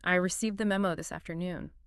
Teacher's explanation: You drag the tone down, maybe a little pause before the last word. The whole sentence feels heavy and slow. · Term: profound disappointment